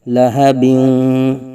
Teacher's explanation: دو زیر کی تنوین کے بعد حروف یرملون میں سے واو آنے کی وجہ سے ادغام یرملون ہوگا مع غنہ ، غنہ کے ساتھ، لہبیوں،